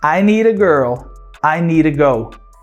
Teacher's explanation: O t virou flap. Então need to e need a são pronunciados da mesma forma.